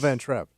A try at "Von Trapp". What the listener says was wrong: Von Trapp. Von. V. Oh, you said Van Trapp.